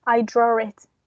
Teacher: we pronounce the sentence as if there was an r in the spelling